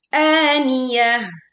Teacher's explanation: Ta marbutah dibaca sebagai wakaf seperti ha sukun.